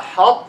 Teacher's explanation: You make idgham without qalqala. Means what? Keep the itbaq of the ta. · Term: idgham naqis